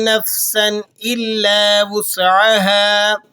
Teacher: نفسا الا وسعها، نفسن کے اوپر تنوین لگی ہوئی ہے، تنوین پر آپ نے بلا غنہ اس کو ادا کرنا ہے اظہار کے ساتھ